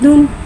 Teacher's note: 2 पेश की तनवीन को होठों की गुलाई के साथ अदा करके पढ़ेंगे